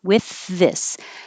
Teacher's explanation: With is voiceless th and this is voiced.